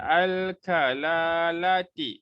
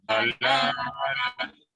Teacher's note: Dekat mana huruf kaf ni keluar? Lidah. Lidah kan? Pangkal lidah.